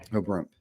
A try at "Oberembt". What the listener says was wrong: Nope. There's no U in it. Oberembt. Now say it all together. Oberembt.